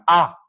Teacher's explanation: ऐसा स्वर जिसमें मुख द्वार पूरा खुलता है। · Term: विवृत्त स्वर